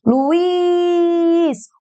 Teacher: Sílaba tônica está ali no is. Terminada em Z.